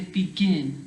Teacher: the stress is on the last part of the word the last syllable